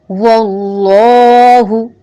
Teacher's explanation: واللہ واو کو موٹا بھی نہیں کرنا، گول ضرور کرنا ہے. اللہ اللہ تعالی کے نام میں دونوں لام کو پر پڑا جائے گا کیونکہ ما قبل زبر ہے